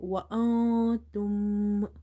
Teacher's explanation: Here tongue is tightly compressed with the upper palate when you say tum, but when you read wa, your tongue is not touching anywhere.